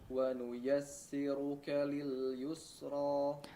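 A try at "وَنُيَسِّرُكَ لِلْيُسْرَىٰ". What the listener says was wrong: Nah, di sini rawan sebetulnya huruf sin ya, tidak menjadi tipis atau agak menebal ya. Coba tarik lagi. Si bibirnya tarik lagi. Jangan dibiarkan di depan dengan kondisi ya dhammah ya.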